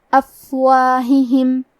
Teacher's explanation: کلمت افواہہم میں فا ساکن ہے، لہذا ہمیں فا کو ہمس سے پڑھنا ہے